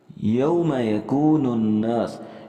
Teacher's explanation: نون مشدد پر ہم نے غنہ کرنا ہے ، نون کے ساتھ الف بھی ملانا ہے، جبکہ اس نون